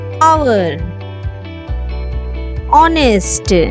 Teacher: In this word, first letter is H, that is consonant. But here the first letter consonant is not pronounced and the word begins with vowel sound. Hour, honest, vowel sound.